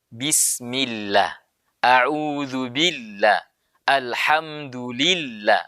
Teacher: nama Allah itu didahului oleh harakat kasrah maka dibaca tipis